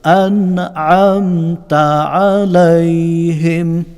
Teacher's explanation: আন বলে গুন্না হবে না, ক্লিয়ারলি গুন্না ছাড়া আমরা পড়ব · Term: ইজহার